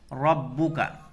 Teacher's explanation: रा को पुर पढ़ेंगे इसलिए कि रा के ऊपर ज़बर की हरकत है। यहाँ या लीन है, या साकिन से पहले काफ के ऊपर ज़बर है, इसको नरमी के साथ जल्द पढ़ेंगे।